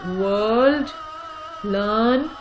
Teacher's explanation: generally it has got a ra sound, an r in the spelling, but the ra sound is not pronounced as such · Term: long vowel sound